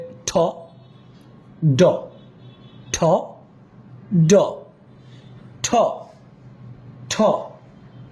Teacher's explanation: ঠ তে একটু প্রেসার দিবেন এটা এসপিরেটেড সাউন্ডস